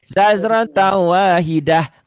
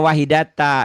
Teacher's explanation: Tak marbutah itu apabila dihentikan dibacanya jadi sukun.